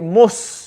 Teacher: the tongue is flat touching the roots of the back of the front bottom teeth. So when we say the sad, we say mus.